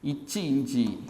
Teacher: நடுநாக்கு நடு அன்னத்தில் பட்டா